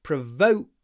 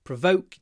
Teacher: When you say provoke, make sure you do a clipped O. Provoke. oh, it's clipped, like oh, provoke before the unvoiced k.